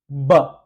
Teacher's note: तो ऑब्स्ट्रक्शन आप जब बोलते हैं, दोनों लिप्स को आप मिलाते हैं और यहां पर एयर में ऑब्स्ट्रक्शन हो रही है